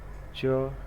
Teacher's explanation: So whenever we have to describe the 3-term level of this cha sound, this is voiceless, palatal, place of articulation is palatal, and manner of articulation is affricate.